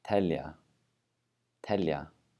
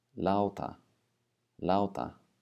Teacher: it's similar to the English T so it's aspirated at the beginning of words unaspirated in the middle